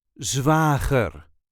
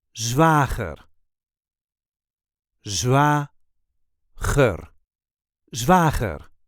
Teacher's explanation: There is a light emphasis on the first syllable.